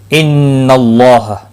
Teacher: نون مشدد پر غنہ ہوگا، اللہ کا لام زبر کی وجہ سے پر پڑھا جائے گا، اس کے اوپر کھڑی زبر بھی ہے، ایک الف کے برابر کھینچ کر پڑھیں گے۔